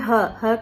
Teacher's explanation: ह का उच्चारण जो है वो काकल से होता है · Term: काकल्य ध्वनि